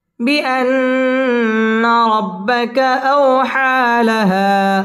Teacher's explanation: আও হা মদ্দে তাবাঈ খারা জবর এক আলিফ টেনে পড়তে হবে। লাহা এক আলিফ টান দিয়ে ওয়াকফ করতে হবে।